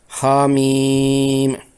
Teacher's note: میم میں پہلی میم کی زیر کے بعد یائے ساکنہ ہے، ان دونوں سے یائے مدہ بنتا ہے۔ اس یائے مدہ کے بعد میم ساکنہ کے آنے کی وجہ سے یائے مدہ می پر 6 حرکات لمبی مد لازم کرنا ہوتی ہے۔